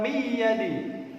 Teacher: nun mati bertemu ya, harus dibaca gunnah, idgham bi gunnah